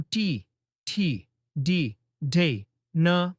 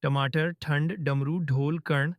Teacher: जब तुम टी, ठी, डी, ढे, न बोलते हो तो जीभ की नोक थोड़ा ऊपर उठती है, जैसे माथे की दिशा में। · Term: मूर्धन्य